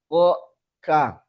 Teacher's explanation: Belakang lidah menyentuh langit-langit atas yang lunak. O, ka. Cuma kaf agak ke depan sedikit.